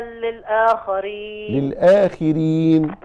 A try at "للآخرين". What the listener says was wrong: للآخرين لا الخاء مكسورة